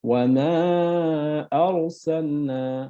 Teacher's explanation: মদ্দে মুনফাসিল শব্দের অর্থ পৃথক বা আলাদা, এবং এটা রুলস হচ্ছে মাদ হরফের পর পৃথক শব্দে হামজা আসলে তাকে মাদ্দে মুনফাসিল বলে, এবং মাদ্দে মুনফাসিলকে মাদ্দে জায়েজও বলা হয়। এই মাদকে 3 আলিফ পরিমাণ লম্বা করে পড়তে হয়। লাইক ওয়া মা আরসালনা।